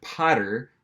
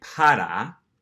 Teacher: have that last er sound at the end of potter we're going to convert that to an a an ah sound